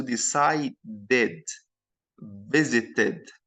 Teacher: the final Ed here we pronounce it as Ed Ed so ID